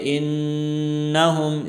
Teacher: میم ساکن میں اظہار ہوگا، آواز ناک میں نہیں جائے گی